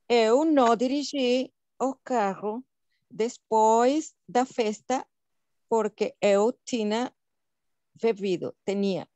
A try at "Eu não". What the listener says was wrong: O não, ele é diferente do no em espanhol. Então, seria eu não.